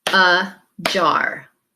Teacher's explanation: the first syllable in a jar is your schwa sound where the a says uh